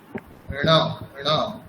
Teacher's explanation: নাসিকাটাও একটু মানে নাকে উচ্চারণ করতে হবে একটু, ঠিক আছে? মূর্ধা, জিহ্বা মূর্ধাতে থাকবে, কিন্তু উচ্চারণটা একটু নাকে হবে।